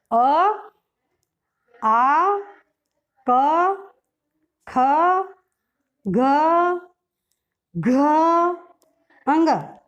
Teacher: कंठ्य, कंठ से उच्चारण होने वाले वर्ण हैं